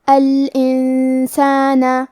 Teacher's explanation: تو ہم نون ساکن کو چھپاتے ہوئے اور غنہ کے ساتھ یہ حکم کو ادا کریں گے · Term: اخفاء